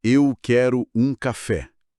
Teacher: Imagina assim, a frase em português é como uma caminhada com passos regulares. Cada sílaba recebe mais ou menos o mesmo tempo. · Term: syllable-timed